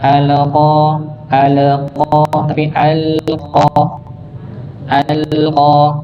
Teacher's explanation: Jadi lamnya tidak sampai dipantulkan, dialirkan dia. Nah, dikarenakan memang dia punya sifat tawassut nih, punya sifat bainiyah, sedikit mengalir.